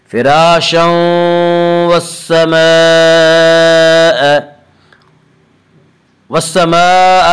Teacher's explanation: جہاں تنوین کے بعد شین کے اوپر تنوین ہے، تنوین کے بعد یومنو کے 4 حرفوں میں سے واو آ رہا ہے اس لیے یہاں پہ ادغام بالغنہ ہوگا